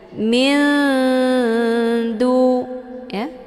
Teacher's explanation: siap-siap menuju ke huruf Dal Min ya hukum bacaan ikhfa aqrab dibacanya sambil didengungkan namun kalau dibandingkan tingkat kesamaran dan dengungan itu lebih ke samar ketimbang dengung · sehingga disebut dengan Ikhfa aqrab cara bacanya nunnya disamarkan kemudian siap-siap cara bacanya nunnya disamarkan kemudian siap-siap menuju ke huruf Dal Min ya hukum bacaan ikhfa aqrab dibacanya sambil didengungkan namun kalau